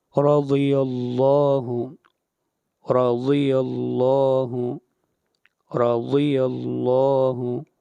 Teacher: یہاں پر را کو موٹا پڑھا جائے گا اور ضاد کو بھی اور لفظ اللہ کو بھی موٹا پڑھا جائے گا